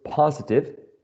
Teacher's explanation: positive has three syllables and the first one is the most prominent or the stressed syllable in this word